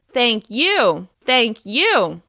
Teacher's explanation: you can say thank you with emphasis on the word you